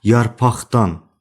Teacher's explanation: Q səsi X kimi tələffüz olunur.